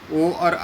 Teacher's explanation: ओ और औ का उच्चारण स्थान क्या है? कंठोष्ठ है।